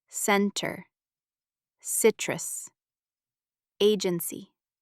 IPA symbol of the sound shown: s